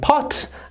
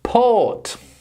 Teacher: that is O like pot, and that is the long version, O like port.